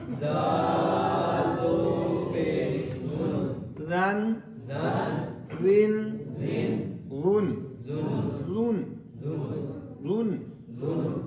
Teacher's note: سیٹی نہیں نکلی چاہیے اور باریک بھی رکھنا ہے ورنہ گڑبڑ ہو جائے گی اگلا ہے وا دو زبر ون